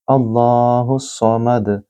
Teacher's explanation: یہاں لام اللہ کے نام سے پہلے پھر زبر ہے جس میں لام کو پر یا موٹا پڑھا جائے گا۔ اللہ نہیں کہیں گے، اللہ الصمد اس طرح بولیں گے۔